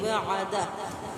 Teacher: आइन की आवाज़ को वाज़ेह करेंगे। यहाँ पे आपने झटका नहीं होने देना, नरमी से ही अदा करना है इसको।